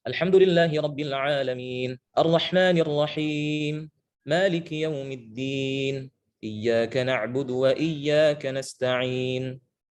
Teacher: awal sampai akhir kita membaca mat arid lisukun dengan 2 harokat